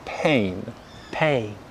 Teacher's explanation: And the second syllable, the bottom lip stretches out again because we're using the diphthong vowel sound A.